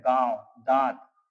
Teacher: हवा निकालने के लिए हमारे अंदर से नाक और मुंह दोनों की सहायता से हवा निकलती है, उन्हें अनुनासिक कहते हैं।